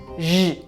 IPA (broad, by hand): ʒ